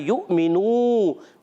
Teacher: वाव के ऊपर है हमजा, इसको झटके से अदा करना है. युमिनू वाव मद्दा है, अय्युमिनू तो खींचना है.